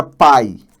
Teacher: Encontro de dois sons vocálicos na mesma sílaba. E aí, logicamente, um deles vai ter que ser, é semivogal. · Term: Ditongo